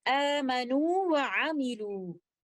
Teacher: the second letter waw, which is in non-mad waw, it is coming from the circling of the two lips. So I will recite both of the letters clearly like this, amanu wa amilu. · the first letter waw is in a mad condition. I will recite it with two counts of stretching of maddu tabi'i, and the second letter waw, which is in non-mad waw, it is coming from the circling of the two lips.